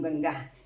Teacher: અનુસ્વારની પછી ગ આવ્યો છે. ગ ક વર્ગનો છે. ક વર્ગનો અનુનાસિક અંગ છે